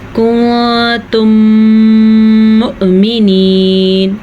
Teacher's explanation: میم ساکن کے بعد اگر دوبارہ میم آ جائے تو دونوں میموں کو آپس میں ملا کے غننے کے ساتھ پڑھتے ہیں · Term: ادغام شفوی